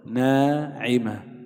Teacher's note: لاحظ الألف هنا سبقت بنون، النون حرف مستفل مرقق، فحكم الألف أن ترقق